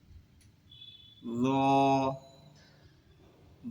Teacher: জিহ্বার আগা, দাঁতের আগা। এই স্থান থেকে জ উঠতে হবে, জটাও একটু মোটা আওয়াজে হবে।